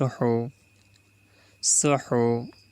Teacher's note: হা কণ্ঠনালীর মাঝখান থেকে উচ্চারিত হবে